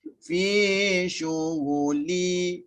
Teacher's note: bila mutlak, lam dengan nun selama-lamanya tidak boleh digabungkan. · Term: bunyi izhar